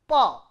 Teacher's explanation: two lip are closed together to produce the p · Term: baval